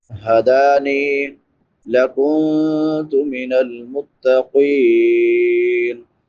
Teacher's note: قوف حروف مستعلیہ میں سے ہے، اس کو پر پڑھیں گے